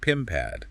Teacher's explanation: Take consonant-to-consonant linking. Pin pad blends into one sound.